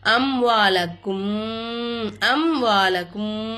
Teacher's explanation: மீமே சாக்கின வெளிப்படுத்தி உச்சரிக்கணும். இல்ஹாரி சபவி சட்டத்தை ஃபாலோ பண்ணிக்கணும்.